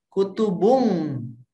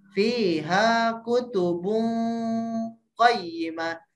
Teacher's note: Samar-samar dengan cara diganti pakai eng ya. N sama G, eng. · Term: ikhfa